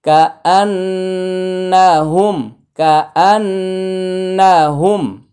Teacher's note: কা আন্না হচ্ছে ওয়াজিব গুন্না, হুমটা হচ্ছে তাড়াতাড়ি,